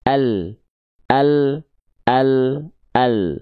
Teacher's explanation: huruf lam itu dilafalkan tepi lidah bagian depan yang kanan dan tepi lidah bagian depan yang kiri